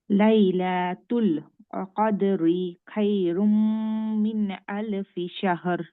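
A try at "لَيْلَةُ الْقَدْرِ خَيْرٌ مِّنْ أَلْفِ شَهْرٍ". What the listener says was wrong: কদরি বললেন তো কদরি বলে কিন্তু আপনি থামতে পারবেন না কদর বলে থামতে পারেন আর যদি কন্টিনিউ করেন ঠিক আছে মা লাইলাতুল কদরি খায়রুম মিন আলফি শাহর ঠিক আছে কিন্তু আপনি কিন্তু এইখানে আপনি রিতে কিন্তু বলে থামা হবে না কদর বলে থামতে হবে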